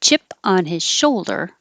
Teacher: You can get rid of the H in his and connect the N from on is.